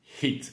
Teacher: On prononce bien le H, hit, et le I court